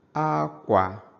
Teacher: We have akwa, which is high, low.